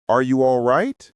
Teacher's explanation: As genuine concern, a long, rising intonation